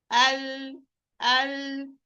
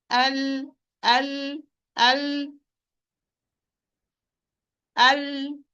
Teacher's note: Letter lam is produced when the area from the nearest to the tip of the edge of the tongue will be pressing or will be pressed against the alveolar ridge of the upper front teeth.